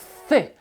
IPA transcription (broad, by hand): θ